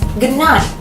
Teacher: The D sound become like the N sound in night. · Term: regressive assimilation